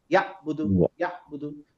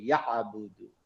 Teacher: যেহেতু এখানে আইন আছে আমি গলাটা ভাঙবো